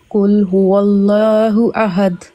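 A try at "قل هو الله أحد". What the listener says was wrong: Very good.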